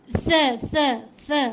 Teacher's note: hujung lidah di antara dua gigi. Tha bukan sa. Bukan sa, jangan bunyi desir.